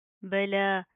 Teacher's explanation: لام کے اوپر کھڑا زبر آ رہا ہے، ایک الف کی لمٹ کے برابر کھینچ کر پڑھیں گے